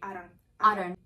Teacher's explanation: focus first of all on the flap d and don't because it's been between two vowels